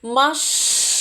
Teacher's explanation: Слухайте уважно на який склад ми його поставимо машина звичайно на другий склад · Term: наголос